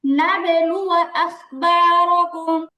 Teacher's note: রটা টান হবে না হরকতের উচ্চারণে টান দেওয়া যাবে না